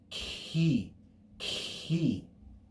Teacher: And you should hear something of a kappa with a breath.